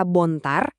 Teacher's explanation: Kata bontar, kalau tekanannya di awal, artinya putih.